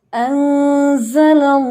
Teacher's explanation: जितनी देर आपने उसको लंबा करना है वो हैवी साउंड में ही रहेगा, बारीक नहीं होगा